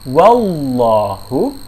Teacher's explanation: Ya, cukup setelah kita bilang huruf wa, langsung posisikan lidah ya, membaca lam tafkhim, yaitu ujung lidah depan, ujung lidah ditempelkan ke pangkal gigi atas bagian dalam, kemudian tengah lidah ditempelkan ke langit-langit